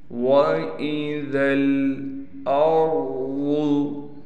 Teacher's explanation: حمزہ کو را سے ملائیں گے، را کو موٹا بھی پڑھا جائے گا، ضاد کو بھی موٹا کر کے پڑھیں گے، اس ذال کو ہم ڈائریکٹ اس لام سے ملائیں گے، یہ دونوں الف نہیں پڑھی جائیں گی۔